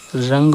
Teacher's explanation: अनुस्वार का उच्चारण करते समय जो है सांस जो होती है वो केवल नाक से निकलती है